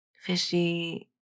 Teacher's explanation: her fishy has a little downward step to it, but the E on fishy, it doesn't have a glide in that final syllable.